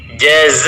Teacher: za di situ panjangnya adalah 4 sampai dengan 5 harakat